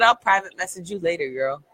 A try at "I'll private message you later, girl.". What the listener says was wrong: More emphasis on girl.